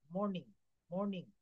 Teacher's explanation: আর এর পূর্বে ভাওয়েল এবং আর এর পর কনসোনেন্ট থাকলে তার মাঝে আর এর উচ্চারণ হয় না